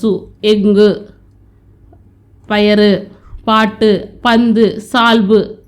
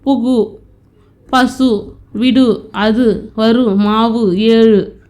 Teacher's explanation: மொழியோட இறுதியில் வரும்போது அரை மாத்திரையாக ஒலிக்கிறது தான் குற்றியலுகரம்